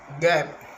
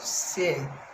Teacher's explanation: These consonant sounds are produced when the back of the tongue touches the soft palate